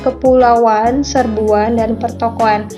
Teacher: pemunculan bunyi W di dalam kata kepulauan serbuan dan pertokoan